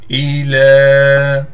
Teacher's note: لام پر کڑا زبر ہونے کی وجہ سے لام کو کھینچیں گے، یہ یا نہیں پڑھی جائے گی